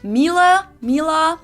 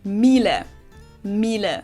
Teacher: This is a German manufacturer of high-end domestic appliances, and it's not exactly pronounced wrong in English, but English native speakers usually say something like Miele, Mila. So it usually sounds more like an A in the end, whereas in German we say Miele. Miele, so the last letter is just a little bit different.